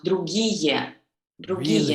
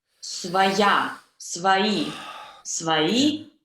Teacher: all these vowels with y sound, you should not glue them into one long vowel. You should pronounce this y sound.